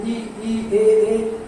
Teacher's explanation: जीभ के आधार पे आगे भाग से ई ए हम बोलेंगे तो अग्र स्वर कहलाएगा, क्योंकि जीभ का आगे के भाग से ये उच्चारित होता है